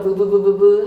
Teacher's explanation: 순경음 비읍은 유성 마찰음으로 부부부부부 하고 발음을 했겠지